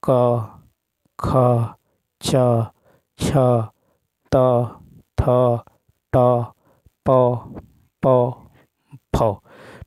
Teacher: अघोष वह ध्वनियाँ होती हैं जिनमें स्वर रज्जु में कंपन नहीं होता है।